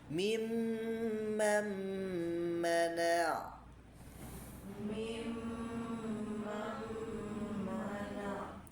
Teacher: Nah, ketentuan membacanya memasukkan nun sakinah atau tanwin ke huruf berikutnya. Menahan bacaan nun sakinah selama dua harakat. Menggunakan bacaan dengan cara melibatkan rongga hidung. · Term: idgam bigunah